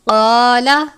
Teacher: قاف کو پر پڑھتے ہیں، الف سے پہلے زبر ہے الف مدہ